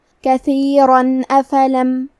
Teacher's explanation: پھر حرف الالف آتا ہے کلمت افلم، الف حروف الاظہار میں سے ہے، اظہار کا معنی ہے ظاہر کرنا، اور کیونکہ تنوین کی اصلیت نون ساکن ہے تو ہم یہاں تنوین ظاہر کریں گے اور اسے نون ساکن پڑھیں گے اور بغیر غنہ سے یہ حکم کو ادا کریں گے